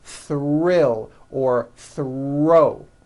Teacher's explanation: When producing these blends, I want you to be aware that the R is the strongest sound of the blend and is louder than the TH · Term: THR blends